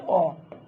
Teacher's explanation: নিম্ন মধ্য পশ্চাৎ স্বরধ্বনি হচ্ছে অ